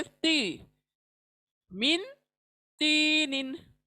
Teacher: ती जबान दांतों के, साइड के दांतों के मसोड़ों पे लगेगा। ती, जैसे ना तोतली बात करते हैं, हम तोतली बोलते हैं ना, उस तरह से ती, मिन तीनिन।